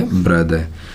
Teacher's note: आर का pronounce नहीं होता, तो पीछे साउंड आती है ए की, और उसके लिए सिंबल उल्टी ई होता है